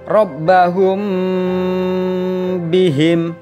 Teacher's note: dengan huruf ba bibir atas dan bawah dalam posisi tertutup jadi Ikhfa Syafawi harus dibaca samar-samar di bibir dan didengungkan